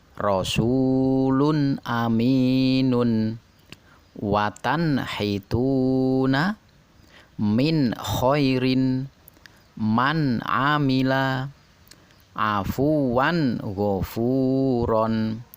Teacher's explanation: nun sukun atau tanwin nya harus dibaca jelas tanpa berdengung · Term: izhar, idhar